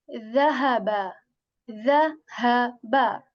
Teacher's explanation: we take the tip of our tongue and we touch that to the edges of our upper front two teeth. Okay, tip of the tongue, we take that, we touch that to the edges of our upper front two teeth, and we make a soft sound of the.